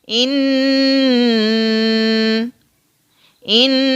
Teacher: एक तो नाक के बांसे से आवाज निकल रही है और जबान ऊपर तालू के साथ चिपक रही है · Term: गुन्ना